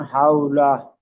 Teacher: ওয়াউলিনকে নরম করে পড়তে হবে, টান দেওয়া নিষেধ।